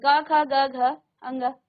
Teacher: और क वर्ग, हर वर्ग में 5 वर्ण होते हैं, हर वर्ग में 5 वर्ण होते हैं। इस क वर्ग का उच्चारण आपके कंठ से होता है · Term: कंठ्य